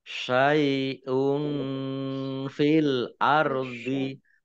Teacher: Syai'un domah tanwin bertemu dengan huruf fa, bacaan ikhfa dibaca samar-samar.